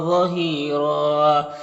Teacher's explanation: یہاں پر وقف کریں گے تو را کو پر پڑھیں گے، اور ایک زبر کے ساتھ الف پڑھیں گے